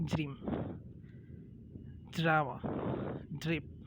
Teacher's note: the DR, it is become J. In American, okay, not in Indian.